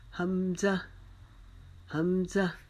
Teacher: حمزہ جو ہے یہ حلق کے نیچے والے حصے سے ادا ہوگا، اس کو نرمی کے ساتھ ہم نے ادا کرنا ہے